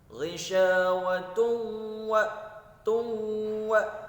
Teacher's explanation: dhammah tain bertemu huruf waw, maka hukumnya adalah idgham bi gunnah